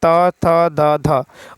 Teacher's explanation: दंत्य उच्चारण वर्ण है त, त, थ, द, ध